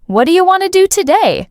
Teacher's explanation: It sounds like one long word if you're not used to it, but if you listen for the stress, you'll notice it's on want, do, and today.